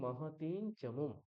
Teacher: চ বর্গের যে পঞ্চম বর্ণ ঞকার, সেটাই অনুস্বারের জায়গায় উচ্চারিত হবে